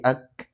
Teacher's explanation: Ya, hames syiddah. Nah, jadi suaranya bukan ngalir udaranya tapi cukup memercik ak.